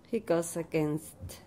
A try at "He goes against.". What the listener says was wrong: Goes against. More Z.